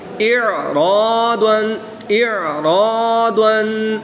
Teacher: را پر زبر ہے تو را کو پر پڑھنا ہے